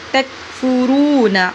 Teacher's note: تکفرون تک نہیں پڑھنا، تک تک تکفرون را کو پر موٹا کر کے پڑھا جائے گا اور تھوڑا سا لمبا کرے گا